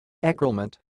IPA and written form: e.kʁu.lə.mɑ̃ (ECROULEMENT)